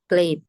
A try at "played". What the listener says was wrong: Pakai id, pakai id. D-nya kurang keluar.